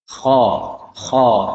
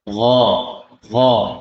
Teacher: Gha lebih ke bawah, lebih dalam. Gha. Kha naik ya.